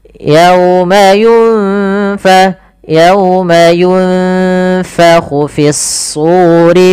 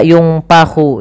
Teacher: Yunfa, ini ikhfa. Samarkan bibirnya, posisinya gigi atas menempel bawah.